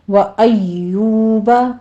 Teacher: یا کے پر تشدید ہے، سختی کیجئے، آگے واو مدہ ہے، دونوں ہونٹوں کو گول کر لینا ہے۔ وَيُونُسَ میں بھی اسی طرح سے واو مدہ ہے، 2 کاؤنٹ کر لیجئے۔